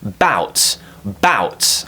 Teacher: the stress is on the second syllable bout bout I'm saying it's strong my pitch is going up